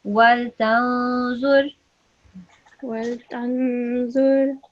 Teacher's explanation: nasal sound on the noon, because it's a noon with the sukoon, noon sakina, followed by a za